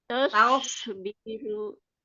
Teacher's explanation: Sudah hilang shinnya, sudah nggak pakai tengah lidah lagi.